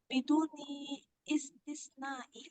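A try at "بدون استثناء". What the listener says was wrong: Bidun istisnain. Oke, ini bacanya dia tanpa hamzah karena hamzatul wasol. Jadi bacanya bidun istisnain, bukan biduni istisnain.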